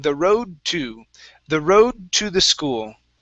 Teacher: you can actually combine the d and the t together